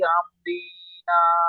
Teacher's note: আলিফ মাদ্দা 1 আলিফ পরিমাণ টান দিয়ে পড়তে হয়